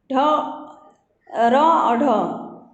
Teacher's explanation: उत्क्षिप्त व्यंजन, इनके उच्चारण में भी जीभ ऊपर उठकर झटके के साथ नीचे गिरती है